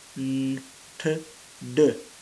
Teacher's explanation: many speakers of English from India substitute some of the alveolar consonants like the n and the t and the d by the retroflex equivalents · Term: Features found in Indian accents